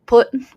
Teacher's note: Now, when you get to the middle of the word or the end of the word, if there is a T there, it is definitely going to be a glottal